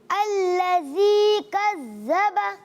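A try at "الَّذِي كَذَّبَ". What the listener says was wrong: اچھا اس میں ز کی آواز کم کریں گے، اس کو سیٹی نہیں آئے گی۔ الذی کذب، کذب، زبان باہر رکھیں،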